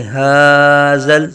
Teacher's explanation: ہا کی آواز حلق کے نیچے سے ایک الف تک کھینچ کے پڑھیں گے